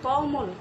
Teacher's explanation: দেখো আমি কীভাবে বলছি ক কে বলছি ক কিন্তু ক না, কমল, মটাকে সামান্য একটু ও এর মতো করে কমল এভাবে উচ্চারণ হবে